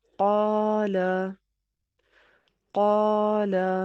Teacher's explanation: الف مدہ، الف سے پہلے کسی حرف پر زبر ہو تو اسے الف مدہ کہتے ہیں، جیسے قاف زبر الف قا، لام زبر لا۔ الف سے پہلے قاف پر زبر ہے تو الف کو الف مدہ کہیں گے اور اس کو ایک الف کی مقدار میں کھینچ کے پڑھیں گے